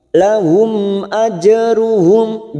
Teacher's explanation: jim sukun qalqalah sugro, kita pantulkan qalqalah sugro karena mati asli di tengah